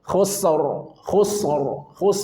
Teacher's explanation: rnya wajib tebal karena sebelumnya sukun sebelumnya dammah. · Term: tafkhim